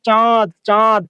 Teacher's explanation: নাসিকের সাহায্যে নাকের সাহায্যে উচ্চারিত হয়। মনে রাখবেন যখন আমরা সর সর রসী এগুলা যখন আমরা মৌলিক সহজীগুলো উচ্চারণ করি তখন আমাদের আলজিভার সামনে যে নরম তালুটা আছে এটা স্বাভাবিক অবস্থায় থাকে। · এটাই হচ্ছে অনুনাসিক স্বর। স্বরধ্বনির উপরে যখন চন্দ্রবিন্দু দেওয়া হয় তখন সেটা অনুনাসিক হয়ে যায়। অনুনাসিক মানে কি? নাসিকের সাহায্যে নাকের সাহায্যে উচ্চারিত হয়।